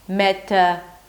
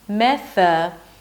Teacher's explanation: You want to make sure that air passes between your tongue and teeth so it doesn't sound like a T.